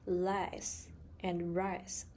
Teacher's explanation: Mandarin speakers may mix up l and r sounds, making words like lice and rice sound the same.